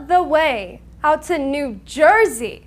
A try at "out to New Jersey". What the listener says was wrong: you have to separate the words